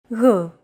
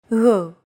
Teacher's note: It's like a very soft, continuous, and loosely held G, almost as if you're gargling, but don't make it sound too throaty. Γ. There's no such sound in English, but most people would transcribe this using the letter G because that's the closest equivalent in English.